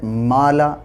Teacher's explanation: الف سے پہلے میم باریک ہے